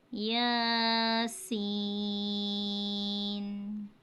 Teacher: یا کے اوپر کھڑی زبر ہے اور کھڑی زبر کو ایک الف کی مقدار کھینچ کے پڑھا جاتا ہے، اور یہ سین ہے، سین پر مد ہے اور اس کو 5 الف کی مقدار کھینچ کے پڑھا جاتا ہے۔